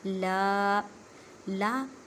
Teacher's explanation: لا کو ایک الف کی مقدار میں کھینچ کر پڑھیں کیونکہ الف سے پہلے زبر آ گئی ہے۔